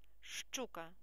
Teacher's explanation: буква ща позначає два звуки ш ч